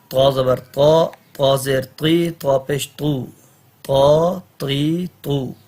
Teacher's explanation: اس کو تا نہیں پڑھنا. تو زبان اوپر والے دانت جس گوشت میں فٹ ہے نا، سامنے والے اوپر، ادھر جا کے زبان لگے گی